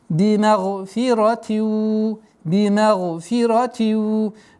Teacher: Здесь танвин касра суау. Применяем частичную назализацию в размере двух огласовок.